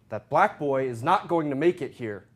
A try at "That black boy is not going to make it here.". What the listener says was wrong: Separate that and black and boy.